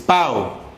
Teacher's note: decreciente porque empezó con vocal abierta y sigue la cerrada